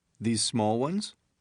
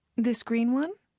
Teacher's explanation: listen to how rising intonation is used to ask for clarification